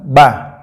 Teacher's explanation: tempat keluarnya itu Bertemunya dua bibir dalam keadaan tertutup rapat